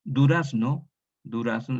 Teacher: la tónica es la A